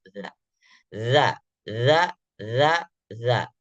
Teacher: rakhawah itu mengalir suara ketika kita lafalkan tidak ada tertahan